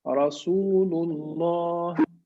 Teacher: it's emphatic sound or with a full mouth because we have Dhamma and Fatha. So it has to be strong and emphatic. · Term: Tafkheem